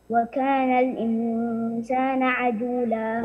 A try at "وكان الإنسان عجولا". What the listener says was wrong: وكان الإنسان هنا ضمة، نون مضمومة هنا.